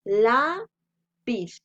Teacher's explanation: Y se dan cuenta, está tildada porque termina en Z. Y la sílaba tónica es la, que sería la penúltima.